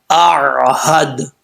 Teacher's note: بعض اوقات لوگ پڑھتے ہیں آہد، جھٹکا دیتے ہیں، جھٹکا نہیں دینا. اگر عین پہ جھٹکا آ رہا ہے تو سمجھیں عین صحیح طریقے سے نہیں پڑھی جا رہی. عین نارمل طریقے سے پڑھا جائے گا.